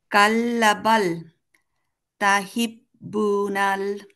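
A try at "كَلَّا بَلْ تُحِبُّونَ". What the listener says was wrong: কাল্লাতে একটা টান হবে, কারণ কি বলুন তো, একটা আলিফ আছে, কাল্লা বাল। তাহিব্বুলান নাকি তুহিব?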